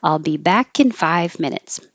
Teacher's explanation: I'll be back kin is the only connection